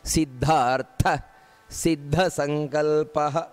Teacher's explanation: ಸಿದ್ಧ ಸಂಕಲ್ಪಹ ನೋಡಿ ಅಲ್ಲೂ ಸಿದ್ಧ ಅನ್ನುವಂತದ್ದು ಮಹಾಪ್ರಾಣ